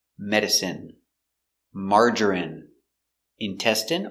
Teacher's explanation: special words ending with INE. We pronounce them all the same, in.